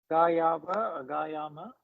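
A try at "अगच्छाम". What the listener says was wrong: Wonderful, perfect.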